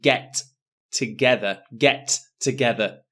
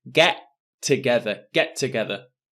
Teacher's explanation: And for the pronunciation for get together, notice there is only one T sound. I don't say get together, get together.